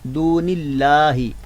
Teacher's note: لفظ اللہ کا لام جو ہے وہ باریک پڑھیں گے، کیونکہ اس کے پہلے والے حرف کے نیچے زیر ہے، زیر کی وجہ سے ہم لفظ اللہ کا لام باریک پڑھیں گے۔